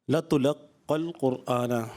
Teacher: یہ قاف پہ تشدید ہے، قلقلہ مشدد ہے، جماؤں کے ساتھ پڑھا جائے گا